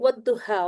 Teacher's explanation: والضحیٰ، واو، واو پہ راؤنڈنگ کر لیجئے. واو کے بعد ہم نے حمزۃ الوصل کو بھی گرانا ہے اور لام تعریف کو بھی گرانا ہے